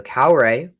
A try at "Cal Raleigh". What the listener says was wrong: Lee. No, you said Cal Ra.